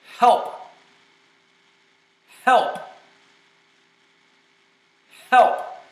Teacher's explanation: The H is the softest sound, and the P is the plosive. That's the hardest sound. So in one word, you can test the full dynamic range of your microphone and see if it goes in the red or if it goes too low.